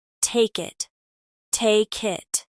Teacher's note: the K sound connects directly to the vowel in it, making it sound like take it. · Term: link consonants to vowels